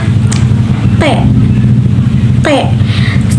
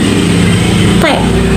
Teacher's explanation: lidah menempel pada gigi belakang bagian atas sehingga udara [berdehem] tidak secara langsung bisa keluar.